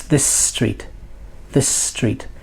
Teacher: two s's together is it this street no it's this street this street the S becomes longer